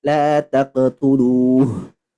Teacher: H dia punya sifat yang namanya rohwa, harus mengalir ketika disukunkan, mengalir suaranya.